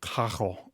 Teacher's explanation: there are some dialects of Spanish where they don't roll the R's, even though they do in other dialects of Spanish. So carro with a double R might sound like cajo in some other dialects.